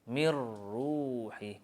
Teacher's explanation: Kita masukkan huruf ra dalam nun tanpa dengung.